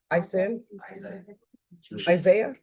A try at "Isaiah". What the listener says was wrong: The H is silent.